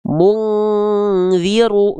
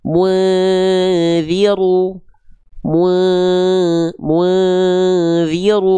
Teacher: Mungziru, enggak. Kan ketemunya sama huruf dzal. Berarti dengungannya enggak kuat, enggak mendekati eng. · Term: ikhfa